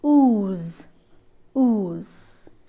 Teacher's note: the back of the tongue is raised to the closed position this is a closed position which means that it almost touches the palate